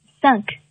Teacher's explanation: 它读这个音，中间的这个哈、啊，上面带一个小波浪线的，那这个呢叫做鼻腔元音。哎，你看底下是一个元音▁a，▁上面有一个小波浪线，说明它是在元音▁a▁的基础上生成的鼻腔元音啊。它读安，发音有点像我们天安门的安，但是在它的基础上，那么 你会感觉哈，你的气流更多的从鼻子当中出来，哎，就是发鼻音